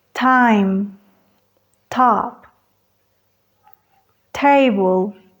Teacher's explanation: La punta de la lengua bloquea el aire al presionarse contra la cresta alveolar, deteniendo el aire completamente y luego, para liberar el aire, bajo la punta de la lengua. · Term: oclusivas orales